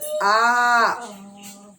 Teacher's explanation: अब बोलते हैं आ, तो मुंह ज्यादा खुल रहा, मतलब जीभ पीछे वाला जीभ ज्यादा वर्क करेगा